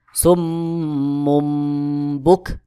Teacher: নুন সাকিন বা তানভীন কে বাদ দিয়ে ছোট্ট মিম দিয়ে বদল করে পড়তে হয় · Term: ইকলাবের